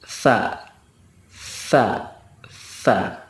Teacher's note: makhraj Tha itu adalah ujung lidah bertemu dengan ujung gigi seri atas